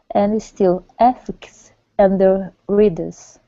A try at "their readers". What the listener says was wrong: Now make sure with their in readers, you're pronouncing the R instead of saying the readers. Okay, it's their readers. So give me good R's. Their readers. Their with an R. Okay, so it's the difference between British pronunciation and American pronunciation. We use the R more than the British do. Okay, so it's their readers.